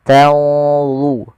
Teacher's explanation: tanzurun ada nun mati ketemu dha, ikhfa-nya langsung ke dha, agak tebal, maka dia di sini tanzurun.